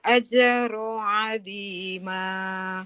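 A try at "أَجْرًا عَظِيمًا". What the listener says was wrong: Tidak ajroh, tanwin Ibu ya. Ajron, ajron azima.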